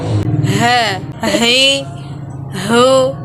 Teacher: huruf ini keluar dari tenggorokan yang terjauh